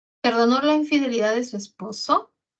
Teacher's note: sube en esposo. No sube en perdonó, no sube en infidelidad. Perdonó la infidelidad de su esposo, todo no sube, no, solo sube esposo.